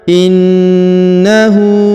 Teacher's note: huruf na ditahan dan ditekan karena terdapat nada tasdid